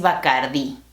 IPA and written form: ba.kaɾ.ˈði (Bacardí)